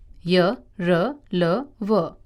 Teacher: इन व्यंजनों का उच्चारण करते समय जीभ मुंह के किसी भी भाग को पूरी तरह स्पर्श नहीं करती है। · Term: अंतःस्थ व्यंजन